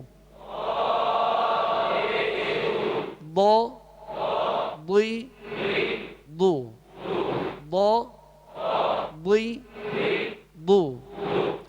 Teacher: ان حروف میں سے یہ ضاد بھی ہے، لہذا ضاد کو پر پڑھیں گے اور زبر زیر میں ہونٹ گول نہیں ہوں گے